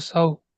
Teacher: ওয়াও সাকিনের ডানে জবর আছে, একে ওয়াউলিন বলে। ওয়াউলিনকে নরম আওয়াজে তাড়াতাড়ি পড়তে হয়।